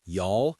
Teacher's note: Southern American, slower, elongated vowels like y'all and fixin' to.